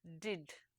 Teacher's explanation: for English stops two positions are relevant one of this is contact between the tip of the tongue and the ridge that is just behind the upper teeth and alveolar Ridge this is referred to as alveolar place of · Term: alveolar place of articulation